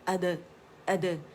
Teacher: हमज़ा क़ता जो है ये अक़सुल हल्क़ से अदा होगा